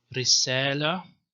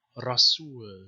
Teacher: But the other example, messenger, rasul. So here the ra is emphatic because it's followed by fatha.